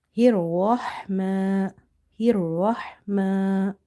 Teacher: ra is heavy because of having fatha on the top.